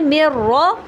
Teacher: نون کی آواز بالکل بھی باقی نہیں ہے، تو اس کا مطلب ہے کہ یہ کامل ہے، تو ہم کیا کہیں گے، ادغام بغیر غنہ کاملہ۔ · نون ساکن مکمل طور پہ مرج ہو گیا کس کے اندر، را کے اندر